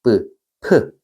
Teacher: 우리 발음도 해보면 브에다가 흐를 넣으면 프 이렇게 프로 소리가 나죠. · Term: 축약